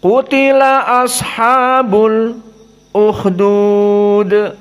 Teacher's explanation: qiraah Hamzah dibaca dalam keadaan as-saqt. As-saqt antara lam dengan hamzah.